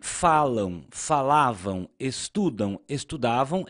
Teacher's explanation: Perceba que agora as palavras são paroxítonas, ou seja, a sílaba tônica é a penúltima.